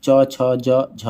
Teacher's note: च छ ज झ तालु से बोला जाता है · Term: तालव्य